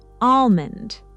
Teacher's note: So the L completely disappears.